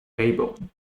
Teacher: Fable is a dark L in this case